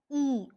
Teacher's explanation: The front of the tongue is raised in the direction of the hard palate to just below closed position.